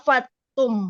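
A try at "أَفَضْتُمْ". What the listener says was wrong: A-nya Bu, A-nya kurang dibaca. Afam.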